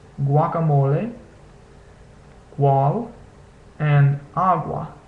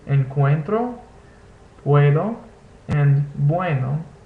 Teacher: With another vowel, U almost takes on a W sound. It's not quite a W, but if you're just starting out, you can basically say W and it'll sound relatively correct.